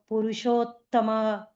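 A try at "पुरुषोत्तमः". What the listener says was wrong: Purushottamah, there is visarga in the end. Purushottamah.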